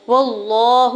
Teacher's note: لام جلالہ کے اوپر کھڑی زبر ہے، 2 حرکت کھینچ کے ادا کریں گے اور پر پڑھیں گے، ہا کی پیش کو بغیر کھینچے ہوئے ادا کرنا ہے۔